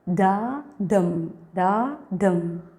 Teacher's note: Pattern it's already understood. Unstressed followed by A stress syllable. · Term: iamb